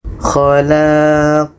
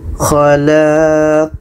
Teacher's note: Ada pantulan, itulah qalqalah. Khalaq. Dan pantulannya lebih besar daripada sughra. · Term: qalqalah kubra